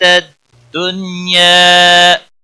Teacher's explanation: نون ساکن کے بعد یا آیا ہے اس لیے اظہار مطلق ہوگا، نون پر گنہ نہیں ہوگا. یہاں پر الف مدہ ہے، یا ایک الف کے برابر کھینچ کر وقف کریں گے.